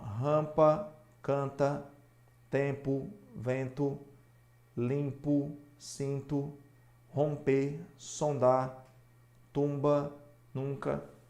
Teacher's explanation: Seguido de M e de N. E observe que a letra M não é pronunciada, por isso que é dígrafo. · Em nenhum momento o M e o N são pronunciados. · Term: dígrafos vocálicos